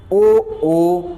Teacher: कंठ से आवाज आ रही है और ओठों का भी हमारा क्या हो रहा है, विस्तार हो रहा है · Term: कंठ ओष्ठ